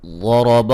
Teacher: غاد کو موٹا ادا کریں گے، را کو بھی موٹا ادا کریں گے